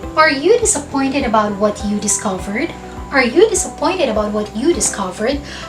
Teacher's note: pataas or rising intonation dahil ang sagot sa tanong na yan ay maaaring yes or no